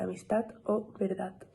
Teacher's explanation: el ensordecimiento de la letra d sobre todo al final de la palabra